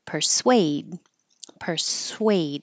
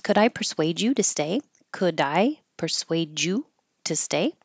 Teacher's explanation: It doesn't look like it, but this S-U-A is sway, so round your lips.